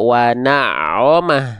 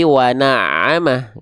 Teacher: huruf ain termasuk ke dalam huruf yang tipis. Karena vokalnya bukan vokal O, kan nggak kita baca wana'omah ya, tapi wana'amah gitu.